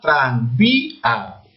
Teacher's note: Había una separación de la I con la A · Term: hiato acentual